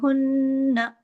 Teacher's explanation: नून पे जब तशदीद होती है तो देर तक आवाज नाक में चुबती है · دیر تک آواز ناک میں چبھتی ہے. ہن، لیکن اس کو الف نہیں لگانا، آ کی آواز نہ، ایسے نہیں کرنا. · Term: अकमल गु्ना